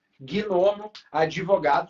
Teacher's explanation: é comum na pronúncia coloquial aparecer um i a mais, uma vogal a mais. E aí vai dar um número a mais de fonema.